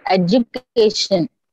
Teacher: the english word education has the highest degree of prominence on the third syllable the first syllable receives the next degree of the accent yes obviously next in line are the second and the last